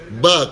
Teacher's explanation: Ba, keluar di antara dua bibir